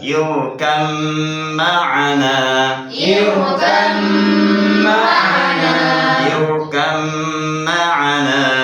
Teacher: Roknya tebal karena didahului oleh hamzah wasol.